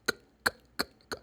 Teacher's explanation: And the sound of letter K is k, k, k, k. There's no vibration of vocal cords. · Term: Voiceless